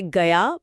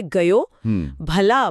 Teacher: जहाँ खड़ी बोली में शब्द 'आ' में समाप्त होते हैं, वहीं ब्रजभाषा में वे 'ओ' या 'औ' की ओर मुड़ जाते हैं। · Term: ओकर बहुला